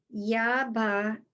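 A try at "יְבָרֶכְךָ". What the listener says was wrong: Not ba. That's it. One dot under it. Ya be u. Yes. No.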